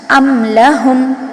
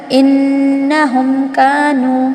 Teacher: نسخہ بتا رہے ہیں میم ساکن ہے، اس کے بعد حرف تہجی میں سے حمزہ سے لے کے یا تک کوئی بھی حرف آ جائے لیکن اس میں با اور میم نہ ہو، ایسے صورت میں میم کو ہم ظاہر کر کے پڑھیں گے، وہاں پر غنہ نہیں ہوگا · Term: اظہار شفوی